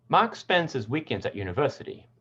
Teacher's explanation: university is the last content word of the thought group, so it becomes the focus word.